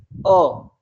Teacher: आपने जैसे ही अ का उच्चारण किया तो आपको ऐसे लगा कि जीवा का जो बीच का भाग है वह कुछ हद तक ऊपर की ओर उठा है, जो प्राणवायु है यहाँ से सीधी ऊपर की ओर गई है। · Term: मध्य स्वर